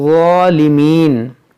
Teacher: جہاں جہاں ضا ہے اس کو آپ نرمی سے اور موٹا کر کے پڑھنا ہے، اس کو پڑھیں گے ظالمین، بعض لوگ اس کو ظالمین پڑھتے ہیں زا سے، یہ غلط ہے.